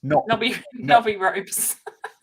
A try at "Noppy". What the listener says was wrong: Nop with a P. Noppy.